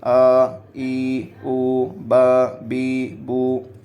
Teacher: کھڑا زبر کھڑا زیر الٹا پیش کو ایک الف کے برابر کھینچ کر پڑھیں گے